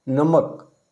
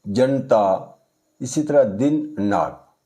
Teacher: देखिए जहाँ उच्चारण जैसे नमक, नमक ना जब उच्चारण हम करते हैं तो जीभ हमारी जो ऊपर वाले दांत के जो आगे वाला भाग है उसकी नोक को छूती है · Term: दंते ना